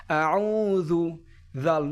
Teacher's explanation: আইনটা গলার ভিতর থেকে উচ্চারণ হবে।